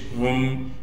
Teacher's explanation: ہا کو آگے میم ساکن سے ملا دیں گے ، ہا میم پیش ہم، بغیر غنہ کے ملانا ہے۔ یود